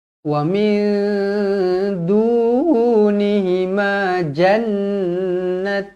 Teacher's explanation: Wa min dunihima jannatan. Wa min du, nun kosong bertemu dengan dal, ikhfa hakiki, dengung 2 harakat.